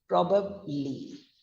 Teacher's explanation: the ub sound is going on a low note on a downfall note